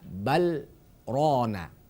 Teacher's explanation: karena di kalimat balrona ini ada hukum sakta maka dibaca jelas lamnya